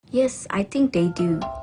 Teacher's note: She uses a fall-rising tone appropriately to indicate that she doesn't really know or is unsure.